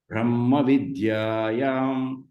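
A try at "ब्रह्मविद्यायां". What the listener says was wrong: Ha should end, not ma ending.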